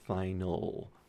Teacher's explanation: So this is a dark L, final. You can feel your tongue in the back going up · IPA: [ɫ]